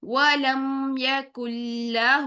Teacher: ہو کی پیش کو 2 کاؤنٹس لمبا کرنا ہے